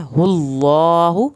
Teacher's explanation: अल्लाह के नाम को पुर करके पढ़ना है